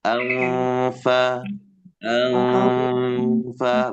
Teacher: membunyikan fa setelah nun sukun itu dengan menempelkan gigi di bibir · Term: ikhfa